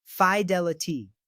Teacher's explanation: A quick tip to remember is to focus on the stress of the second syllable. Emphasizing del helps anchor the word, making it sound right. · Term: stressed syllable